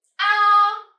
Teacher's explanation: And then you pronounce the 1st tone. You will feel it go high.